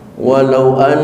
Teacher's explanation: tasdid yang ada di atas huruf nun berlaku hukum gunah musyaddadah an ditahan selama dua harakat